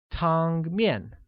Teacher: carries a high level tone on the first A and a falling tone on the second